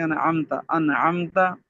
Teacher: دونوں ہونٹوں کے ملانے سے میم کو ظاہر کر کے پڑھنا۔ میم اور با کے علاوہ میم کے بعد جو بھی حرف آئے گا تو میم کو ظاہر کر کے بلا غنہ پڑھیں گے، جیسے انعمتا کی میم، اس کو اظہار شفوی بھی کہتے ہیں۔